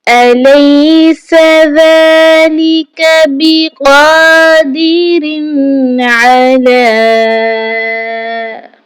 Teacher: أَلَيْسَ ذَلِكَ بِقَادِرٍ عَلَىٰ، یہاں پر سین آ چکا ہے۔ سین جب ادا ہوتا ہے تو یہ سیٹی کی آواز دیتا ہے · ذال کو نہایت نرمی کے ساتھ پڑھا جاتا ہے، ڈھیلے منہ اور ڈھیلے ہونٹوں کے ساتھ اس کی ادائیگی ہوتی ہے۔ قاف کو بھی ایک الف کے برابر کھینچ کر پڑھا جائے گا اور موٹا پڑھا جائے گا۔ اس کے بعد یہاں پر آپ دیکھ لیجئے را کے نیچے تنوین کی علامت ہے اور اس کے بعد حروف حلقی میں سے عین آ چکا ہے۔